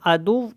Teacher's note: دال کو جب واو کے ساتھ ملانا ہے تو آواز کو ناک میں نہیں لے کے جانا